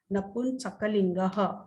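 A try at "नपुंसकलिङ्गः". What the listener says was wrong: Yeah, not napun. Napum. Napum. Not N.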